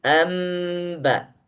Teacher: Tidak terdengar huruf nun sama sekali. Justru yang terdengar huruf mim, amba. Nunnya sudah tidak ada. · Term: iqlab